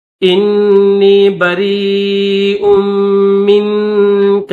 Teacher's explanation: را یا مد زیر ری، حمزہ دو پیش، حمزہ میم دو پیش میم نون زیر من، یعنی با کے بعد را کو یا کے ساتھ ملائیں گے اور اس کے بعد حمزہ کو میم کے ساتھ ملائیں گے. بریء منک مد کریں گے کیونکہ یا کے اوپر جو ہے وہ بڑی مد ہے، تو اس کو 3 سے 5 الف کی مقدار میں کھینچیں گے